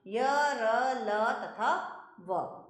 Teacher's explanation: इनके उच्चारण में वायु का अवरोध बहुत कम समय के लिए होता है। जिन व्यंजनों के उच्चारण में जीभ मुख के किसी भी भाग को पूरी तरह स्पर्श नहीं करती वे अंतःस्थ व्यंजन कहलाते हैं